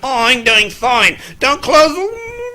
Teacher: higher pitch and muffled sound so that you don't hear any of those staccato sounds. That gives you the muffled voice and the distant voice.